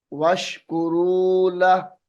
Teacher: वश्कुरू लहू वक्त की हालत में वश्कुरू लह पढ़ा जाएगा।